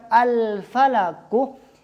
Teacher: ketika mengucapkan al-falaku, lam ini dibaca dengan al. Artinya lam tidak dimasukkan ke huruf fa, bukan afalaku, bukan. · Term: izhar